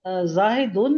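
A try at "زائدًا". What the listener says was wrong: ٹھیک ہے، ہاں نہیں ڈالنی. زاہد نام نہیں، زائد.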